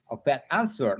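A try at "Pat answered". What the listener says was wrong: Bukan a pet. A pet lagi. Pet langsung aja.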